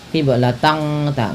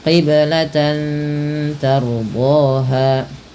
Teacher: Samarkan bunyi suara tan ketika bertemu dengan huruf ta. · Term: ikhfa hakiki